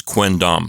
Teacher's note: that M turns into an n and becomes quind why because it's much easier to say quim is awkward because you're putting your two lips together to · with the letter N, you don't have to put your lips together. Your lips can stay apart, and they're ready to say the letter D right after that.